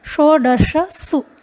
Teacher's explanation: षोडशसु यहाँ पर आप देखें तीनों ही सकार इकट्ठे हुए हैं, इसलिए उच्चारण में थोड़ी कठिनाई होगी पर अभ्यास करने पर यह भी सरल हो जाएगा। शो मूर्धन्य है, दश में तालव्य सकार हैं और सु में दंत्य सकार हैं